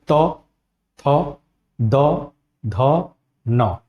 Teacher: जो जीभ है वह दांत को स्पर्श करती है, तब इसका उच्चारण होता है